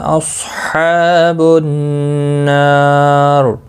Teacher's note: ہا کا خاص خیال رکھنا ہے، وسط حلق والا ہے، اس کی ادائیگی ضروری ہے